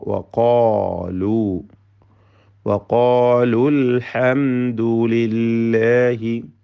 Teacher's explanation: അൽഹംദു എന്നതിലെ സാക്കിനായ മീമിനെ അല്പം പോലും മണിക്കാതെ ഇൽഹാർ ഷഫവി ചെയ്യേണ്ടതാണ്, വെളിവാക്കി ഉച്ചരിക്കണം.